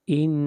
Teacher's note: ان نون کے اوپر شد ہے، نون کے اوپر غنہ کریں گے، آواز ناک میں جائے گی اور غنہ کریں گے 1 الف کے برابر۔